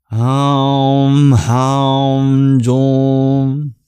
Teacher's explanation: That's called an anuswara. It's a nasalization where you bring the place of resonance into your nasal cavity.